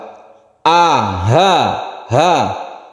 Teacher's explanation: tempatnya atau tempat keluarnya itu di tenggorokan paling bawah atau pangkal ya, pangkal kerongkongan, pangkal rekungan, pangkal tenggorokan, itu bahasanya. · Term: aqsal halqi